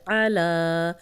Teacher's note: عین کی پریکٹس کریں گے، حروف حلقی میں سے ہے اور اس کو حمزہ نہیں بنائیں گے، لام پہ کھڑی زبر ہے، اس کو 2 حرکات لمبا کریں گے۔